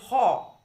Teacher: জিহ্বামূলের পেছন, একদম কণ্ঠের পেছন অর্থাৎ কণ্ঠনালী যে পোর্শনটা, সেইখান থেকে শ্বাসবায়ুটা যেন একটা বাধা প্রাপ্ত হয়ে বেরিয়ে আসছে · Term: কণ্ঠনালীয় ব্যঞ্জন